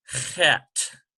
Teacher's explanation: this CH transliteration is sort of a hoarse, almost like you're coughing up phlegm of some sort. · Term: guttural